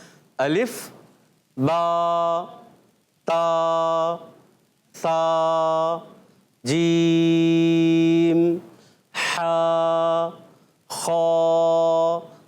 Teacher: آخر میں ہائے ساکنہ یا حمزہ ساکنہ پیدا نہیں کرنا ہے. اس چیز کا خاص خیال رکھنا ہے.